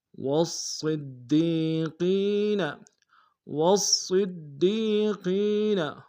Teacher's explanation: من النبیین والصدیقین، والصدیقین، واو صاد کے سامنے آئیں گے، صاد کو موٹا ادا کریں گے، تشدید زور دیں گے